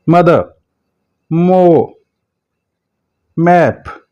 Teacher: आपकी जो आवाज है जो नेजल कैविटी में जाएगी, गुन्ना की आवाज पैदा होती है। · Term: नेजल साउंड